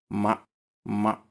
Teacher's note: joindre les parties externes des lèvres